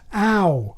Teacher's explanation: In modern SSB, the onset has gone against the anti-clockwise tide and is now front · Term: mouth vowel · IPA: [aw]